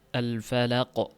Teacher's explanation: oxirida xuddi hamza borga o'xshab i degan tovish chiqib qoladi. Misol uchun alfalaq degan mana shu tovish chiqib turadi.